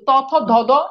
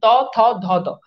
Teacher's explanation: দাঁতের গোড়া থেকে, দাঁতের গোড়ায় জিহ্বাটা লাগে, ত থ ধ দ। এই জন্য এগুলোকে বলা হয়, এগুলো হচ্ছে দন্ত ধ্বনি।